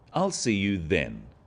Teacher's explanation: Notice how the stress is on the word then to confirm that the time is definite.